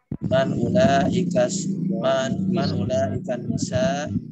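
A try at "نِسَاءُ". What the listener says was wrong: Nisa'u dibaca akhirannya.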